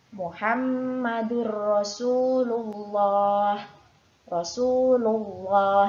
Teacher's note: Sebelum lafadz Allah ada huruf lam yang berharokat dhammah, maka lafadz Allah wajib dibaca tafkhim atau tebal.